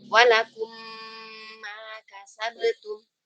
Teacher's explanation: Dua-duanya mim. Maka mim yang pertama dimasukkan ke mim yang kedua. · memasukkan huruf mim sukun ke mim di depannya. Tentu dengan adanya gunnah. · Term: idgham shaghir, idgham mimi